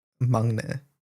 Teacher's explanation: It's in between like a G and a K sound.